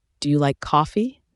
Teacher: Do you hear the rising tone?